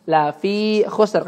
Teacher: la-nya pendek, fi-nya 2 harokat.